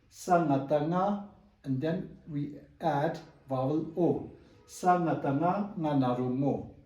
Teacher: when you see superscribe sa on nga the tone should be raised